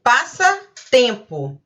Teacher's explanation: mesmo que é uma única palavra você também tem duas sílabas tônicas